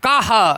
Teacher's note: विसर्ग का उच्चारण कंठ से होता है